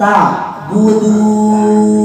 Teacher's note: Ujung lidah menempel ke pangkal gigi seri atas. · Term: huruf dal